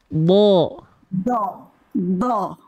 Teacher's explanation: huruf Dad itu dilafazkan dari tepi lidah betul samping lidah ke disentuhkan ke mana samping lidahnya tepi lidahnya